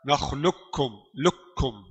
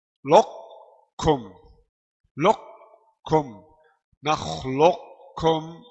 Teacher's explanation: Jadi qaf masuk dalam kaf. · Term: idgham kamil